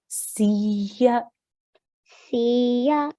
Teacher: You're really pushing on that ya. You're not elongating, but pushing.